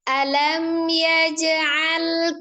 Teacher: ada jim sukun qalqalah ya, dipantulkan